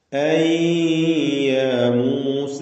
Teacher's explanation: അൻ എന്ന സാക്കിനത്തായ നൂനിനെ യായിലേക്ക് ലയിപ്പിച്ച് മണിക്കണം. ഇദ്ഗാം ബിഗുന്ന നാഖിസ്, യായിലേക്ക് ലയിപ്പിച്ച് മണിച്ചുകൊണ്ട് ഉച്ചരിക്കുക.